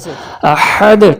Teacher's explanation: یہاں پہ ہا حلق کے درمیان سے، احد ٹھنڈے سانس والا ہا.